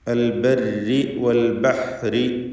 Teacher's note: ഈ പദങ്ങളിലൊക്കെ റാഇന് കസ്റാണുള്ളത്. തർക്കീഖ് ചെയ്യേണ്ട സന്ദർഭമാണ്. വഖഫ് ചെയ്യുകയാണെങ്കിൽ ആ റായിന് തഫ്ഖീം വരും.